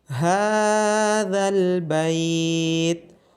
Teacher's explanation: ہا کی آواز گلے کے نیچے والے حصے سے آئے گی اور ذال کو نرمی کے ساتھ پڑھا جائے گا،